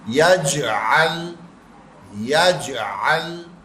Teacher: یہاں پہ جیم ساکن حالت میں آیا قلقلہ کرے گا